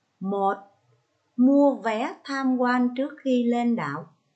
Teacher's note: Ở điều thứ nhất, các con sẽ ngắt nghỉ hơi sau số thứ tự của nội quy và ngắt nghỉ hơi cuối câu. Đồng thời, chúng ta nhấn giọng từ mua vé.